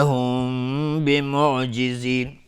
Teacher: میم ساکن برش با اخفای شفوی